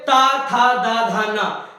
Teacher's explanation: जब ना बोलोगे तो नाक के मतलब बिल्कुल वाइब्रेट करेगी, बिल्कुल नाक, ठीक है। आप बोलोगे ओष्ठ व्यंजन में पा फा बा भा मा, जब मां बोलोगे तो अपने आप ही रुक जाएगी। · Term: अनुनासिक